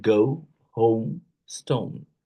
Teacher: Starts with the mid-central vowel sounds like um, o and glides to a near close back rounded vowel sounds like oo. In American English, the sounds is usually o.